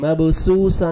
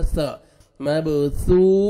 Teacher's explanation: सामने वाले जो दांत हैं उनके नीचे आप जबान को लगाएंगे टंग को तो अदा होएगा सा